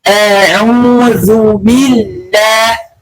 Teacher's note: bunyi vokalnya adalah u, kesalahannya adalah di o